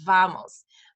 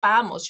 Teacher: V your teeth are on top of your bottom lip vamos but in Spanish it's vamos your lips are going to be pursed together